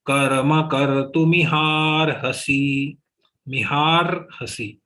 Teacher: Only ha is dirgha, otherwise everything is short, so move up to ha very fast.